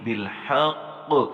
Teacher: قاف موٹے حروف میں سے ہے اور قاف کے اوپر بلو کلر ہے، لہٰذا یہاں موٹے ہونے کے ساتھ ساتھ بھی ہم نے یہاں پہ قلقلہ کرنا ہے